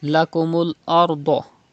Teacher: You have to read Ra with thicker voice because there is Zabr before Ra Sakin. And Dod is also thick because it is a Mustaliya letter